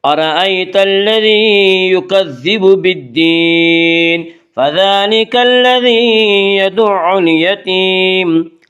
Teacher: فذلک، ذال کے اوپر کھڑا زبر ہے، کھڑا زبر کو 1 الف کے برابر کھینچ کر پڑھیں گے۔